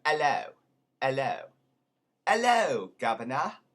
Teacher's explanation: H in the beginning of a word is never pronounced, and the vowel that would be after the H tends to be back in the throat